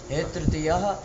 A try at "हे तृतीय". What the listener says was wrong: विसर्ग नहीं होता है ना, हाँ